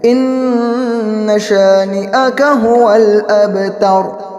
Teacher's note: ابتر کے اندر بھی دیکھیں اب وہاں پر قلقلہ ہوگا کیونکہ با حروف مقلقل میں سے ہے